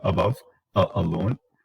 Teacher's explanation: the tongue is in the center of the oral cavity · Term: schwa